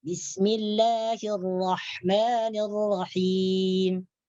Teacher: cara kita menggetarkan huruf ra di sini adalah dengan getaran yang ringan. Maksud ringan itu disamarkan. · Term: at-takrir